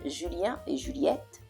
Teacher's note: Okay, so anytime you see ET, it means and it's pronounced A. So though there's a T, the T is not pronounced.